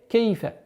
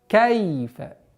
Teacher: Нужно обращать внимание, что фатха над буквой каф не должно переходить в звук ке